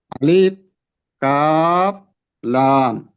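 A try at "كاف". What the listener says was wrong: কাফের ক্ষেত্রে লম্বা হবে না, আলিফ কাফ, তো লাস্টে বাতাস চালু থাকবে। কাফ, বাতাস চালু করেন। যখন চাপ দিবেন কাফের, যখন হরফটা উচ্চারণ শেষ হবে তখন বাতাস চালু রাখবেন, কাফ।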